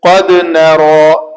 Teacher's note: نون پتلا اور را موٹا